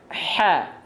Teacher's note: H kecil dilafalkan dari tengah tenggorokan. H. Kalau dia terlalu ke atas, jadinya H.